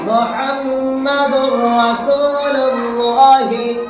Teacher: इदगाम होगा लाम और रा में, इदगाम बिला गुन्ना होगा, बगैर गुन्ना के मिलाकर पढ़ेंगे।